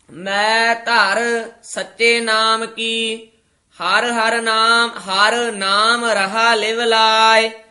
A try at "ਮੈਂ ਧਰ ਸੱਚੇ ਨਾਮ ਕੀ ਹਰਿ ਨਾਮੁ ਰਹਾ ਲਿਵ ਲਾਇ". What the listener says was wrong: ਮੈਂ ਧਰ ਇਕੱਠਾ ਨਹੀਂ ਕਹਿ ਦੇਣਾ। ਮੈਂ ਧਰ, ਇਥੇ ਠਮਕ, ਸੱਚੇ ਨਾਮ ਕੀ, ਇਥੇ ਵਿਸਰਾਮ। ਹਰ ਨਾਮ ਰਹਾ ਲਿਵ ਲਾਇ।